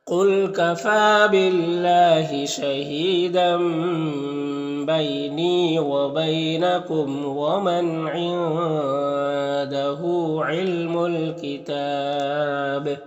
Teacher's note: وقف کریں گے تو با کا زیر سکون سے بدل جائے گا تو با میں قلقلہ ہوگا اور مد عارض وقفی ہوگا.